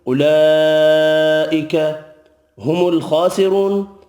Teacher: خا حروف مستعلیہ پر پڑھا جائے گا. را پیش کی وجہ سے پر پڑھیں گے. واو مدہ ایک الف کی مقدار میں کھینچ کر پڑھیں گے. · را پیش کی وجہ سے پر پڑھیں گے. واو مدہ ایک الف کی مقدار میں کھینچ کر پڑھیں گے. خا کھڑی زبر کی وجہ سے ایک الف کی مقدار میں کھینچ کر بھی پڑھنا ہے اور نون ساکن پڑھیں گے وف کی صورت میں.